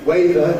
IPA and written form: ˈweɪðə (weather)